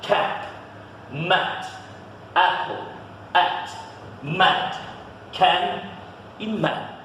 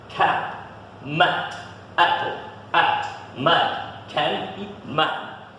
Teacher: O A é um som que você abre a boca para falar um A, mas você fala um E, algo parecido com O.